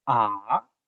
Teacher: It's so ah is the second tone. The third tone it falls first and then rises.